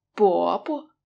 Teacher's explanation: the second syllable is also a neutral tone.